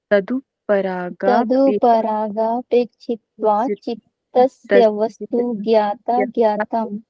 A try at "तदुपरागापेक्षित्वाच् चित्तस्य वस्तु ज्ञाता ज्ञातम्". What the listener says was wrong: बहुत सुंदर, बहुत अच्छे फ्लो में